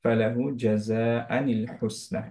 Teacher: আনটাকে নি পড়ে ফেলবো এখন, নুন সুকুনে না দিয়ে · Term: নুন কুতনি